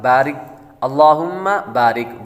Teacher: را کے نیچے زیر ہو تو را کو باریک پڑھتے ہیں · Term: را باریک